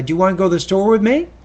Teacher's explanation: if you're asking a yes no question you might say uh do you want to go to the store with me in that case it kind of Rises a little bit at the end · In that case, it kind of rises a little bit at the end of the statement, at the end of the question.